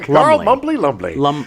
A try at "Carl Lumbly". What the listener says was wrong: Lumley. I think the B is silent.